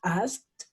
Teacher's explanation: K, no hace vibrar las cuerdas vocales, ¿sí? Es el sonido K.